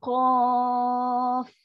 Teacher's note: Kalau hujung dia ada fa, sifat fa ada angin yang lepas. Dia ada sifat hams